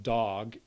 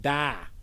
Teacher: and say dog but the child doesn't quite match that vowel children most likely at a very young age say under age five or often say something more like da and that's a much fronter vowel · one thing that really stands out and that's the vowel ah in adult english the vowel o is a fairly back vowel in a pronunciation like dog